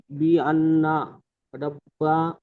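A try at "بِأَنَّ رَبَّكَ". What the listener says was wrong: এখানে গুন্না আরেকটু গুন্না করেন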